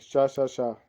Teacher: शा का उच्चारण स्थान है वो है तालु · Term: ऊष्म व्यंजन